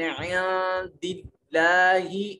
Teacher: یہاں نون ساکن کے بعد دال حروف اخفا میں سے، تو یہاں اخفا کریں گے، اور اس میں جلالت سے ما قبل مقصور ہے، اس میں جلالت کو बारीक पढ़ा जाएगा।